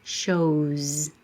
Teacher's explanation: O is a vowel. All vowels are voiced, so it's a Z.